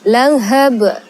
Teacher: Bacaannya ya langsung saja qalqalahkan atau dipantulkan. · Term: qalqalah kubra